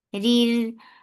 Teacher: Ra with kasra is light, and then ra with sukoon is light because there is kasra before it.